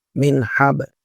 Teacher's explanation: একদম স্পষ্ট করতে হবে। মিউ বলা যাবে না, এটা গুণা করা যাবে না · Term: ইজাহার